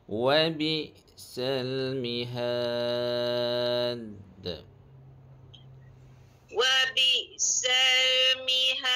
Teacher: qalqalah kubra pada huruf dal